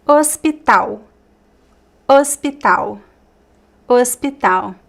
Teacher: So the H is mute.